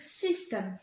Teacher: Par exemple, pour le mot system, c'est la première syllabe qui va être accentuée.